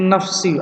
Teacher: Min nafsi ada dengungnya, di hidung itu kedengeran.